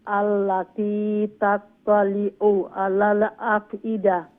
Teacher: আইন গলার মাঝখান থেকে উচ্চারণ হবে